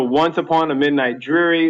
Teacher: it's stressed unstressed stressed unstressed starting with stress so that's one two three four feet in the line so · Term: trochaic